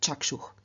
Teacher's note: Chakshus, in the nominative, vocative, accusative singular, does not add an ending, and so again, through external sandhi, the s changes into visarga, and so we get chakshuh.